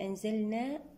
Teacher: أنزلنا هنا مد طبيعي وقفا بمقدار 2 حركات ومد منفصل جائز وصلا بمقدار 2 حركات أو 4 أو 6 أو 5 حركات إذن نعيد مرة أخرى أنزلنا النون مع الزاي إخفاء حقيقي بغنة